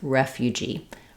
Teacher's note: the word refugee is stressed on the last syllable G, but we do have secondary stress and a clear vowel on the first syllable. So letter E will be the sound, like in reference.